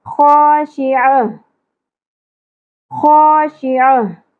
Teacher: आगे जो ता है वो आयत मुकम्मल होने की सूरत में हा में बदल जाएगी